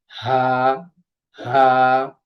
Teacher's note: কন্ঠনালীর শুরু হইতে উচ্চারিত হয় হা। আর তার সাথে মুখে একটু বাতাস বের হবে।